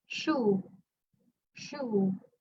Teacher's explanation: When you pronounce the SH, there's no vibration yet. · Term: voiceless